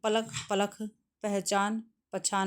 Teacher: कहीं कहीं अल्प प्राण ध्वनियों का महाप्राणीकरण भी होता है